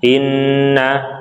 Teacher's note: Inna kita tahan 2 harokat gunnah